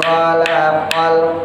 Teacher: kho-nya ngorokin yang udah bisa ngorok, dikit aja asal ada